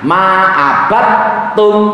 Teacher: proses idgham, yaitu dalnya dibaca tak